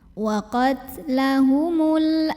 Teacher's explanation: Karena alif lam bertemu huruf qamariyah yaitu hamzah yang hamzahnya ya. Maka cara membacanya lam sukunnya dibaca dengan idhar atau jelas, atau disebut juga dengan idhar qamari.